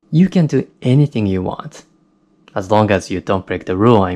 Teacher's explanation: I said the last part of the sentence quite fast with a little bit of rising intonation at the end